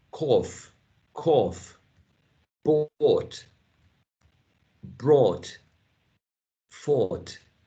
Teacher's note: vowel chart we see this all here at the back right this is a back vowel and it's um mid vowel as well